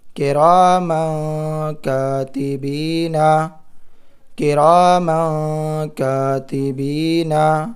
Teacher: کاف زیر کی، را الف زبر را، کرا، میم 2 زبر من، کرامن، کاف الف زبر کا، کرامن کا، تا زیر تی، کرامن کاتی، با یا زیر بی، کرامن کاتبی، نون زبر نا، کرامن کاتبینا، کرامن کاتبینا۔ یہاں پر دیکھیے تنوین کی آواز کو ناک میں چھپا کر پڑھے، کیونکہ تنوین کے بعد کاف حروف اخفاء میں سے ہے، کاف حروف اخفاء میں سے ہے، تو کرامن کاتبینا اس طرح پڑھنا ہے۔